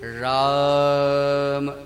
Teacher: रा मूर्धा से, आ कंठ से और मा नासिका से। रा अक्षर मूर्धा से, आ अकुह विसर्जनीया नाम कंठा, कंठ से, और मां अनुस्वार है नासिका से।